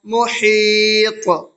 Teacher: محیط، میم پیش مو، ہا یا طا زیر حیط، محیط، طا حروف قلقلہ میں سے ہے اور طا کے اوپر جزم ہے تو اس میں قلقلہ ہوگا۔